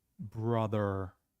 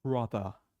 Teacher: The R in the end of it is rolled. It's er. Okay?